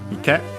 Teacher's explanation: A strictly Japanese word, which means pond, accent on the last syllable